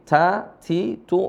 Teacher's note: huruf ta Di sini ada desisnya karena merupakan sifat dari huruf ta itu sendiri